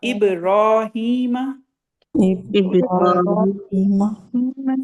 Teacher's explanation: را کے بعد الف بھی ہے مد اصلی 2 کاؤنٹ لمبا